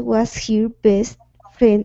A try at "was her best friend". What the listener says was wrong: All right, now instead of saying was here, this is going to be was her best friend. Was her best friend.